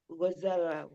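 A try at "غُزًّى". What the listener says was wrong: Guzza, guzza, huruf zainya tasdid.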